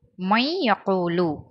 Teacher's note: அந்த நூனை யால சேர்த்தா மாதிரி ஓதணும். மை யகூலு அப்படின்னு ஓதணும்.